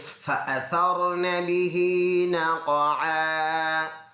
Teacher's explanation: فا جو اوپر کے دانتوں نیچے ہونٹ کے اوپر جب لگے تو اسے فا ادا ہوتا ہے